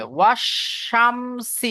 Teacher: জিভের মাঝখান ওপরের তালুর সাথে লাগিয়ে শিনটা বের করতে হবে।